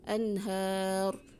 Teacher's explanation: Ra-nya disukunkan tapi tetap pembacanya tafkhim atau tebal